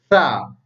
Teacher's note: Sa dibaca di ujung lidah. Jadi ujung lidah dirapatkan dengan gigi atas. Maka bunyi bacaannya sa. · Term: huruf sa